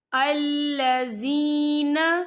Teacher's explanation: یا ساکن سے پہلے زیر ہے، تو ہم اسے 2 یا 3 حرکت کے برابر کھینچے پڑھیں گے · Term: یا مدہ